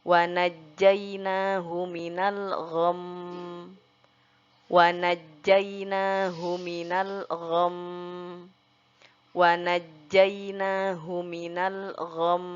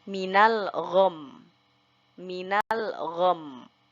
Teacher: Jadi mimnya kita masukkan dulu ke hidung. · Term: dengung